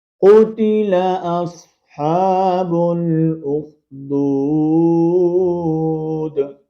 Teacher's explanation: با کو ڈائریکٹ ہم نے لام کے ساتھ ملانا ہے